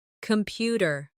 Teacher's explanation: The stress is on the second syllable. Compu tear. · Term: word stress